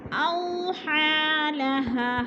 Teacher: اوحا لها، یا مدہ کے اوپر اگر ہا کھڑی زبر آ جائے تو پھر یا مدہ کو نہیں پڑھیں گے، ہا کو پڑھیں گے، یعنی کھڑی زبر کو۔ اوحا لها، ہا پہ الف مدہ کو کھینچ کر پڑھنا ہے